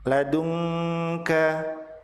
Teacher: Nun mati bertemu dengan kaf disebut sebagai ikhfa hakiki. Nun dibaca samar dan ditahan 2 harokat disertai dengan gunnah.